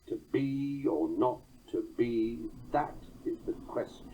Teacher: It is helped, as most interior trochaic switches are, by the very definite caesura. The pause after the opening statement splits the line into two and allows the trochaic substitution to have the effect they usually achieve at the beginning of a line.